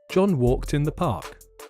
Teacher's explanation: Can you hear the t sound in front of the word in?